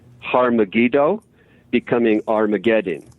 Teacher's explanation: A really good example of how that H drops, the H sound, the H phoneme drops, is in terms of Hellenic Hebrew, it can be found in Har Megiddo becoming Armageddon.